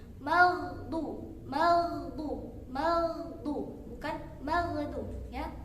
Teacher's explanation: Ghain sukun bersifat rakha, yaitu mengalirnya suara.